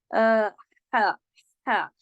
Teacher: गले से होता है, हरफ़े हल्की है, ठीक है? और इसमें हा, हा, अब देखिए इसमें साँस चलती हुई महसूस होती है।